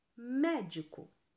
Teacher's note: na palavra médico a antepenúltima sílaba é a mais forte